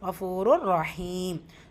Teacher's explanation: ஃபூ அலிஃப் வாவ் மத்தா 2 ஹரக்கத் அளவு நீட்டம் கொடுக்கணும். தன்வீனுக்கு அப்புறமா ரா இதுதான் பிலா குன்னா இணைக்கணும். ஆனால் குன்னா செய்யக்கூடாது.